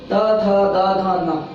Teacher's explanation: इसके पश्चात ले जो कि अंतस्थ व्यंजन है, और दंत्य से जो से सलेट जिसे हम बोलते हैं उसका उच्चारण स्थान दंत होता है। यानी कि ये जब वर्ण बोलेंगे हम तो हमारी जो जीभ है ये दांतों को छूती है, इसीलिए इन वर्णों को दंत्य कहा जाता है।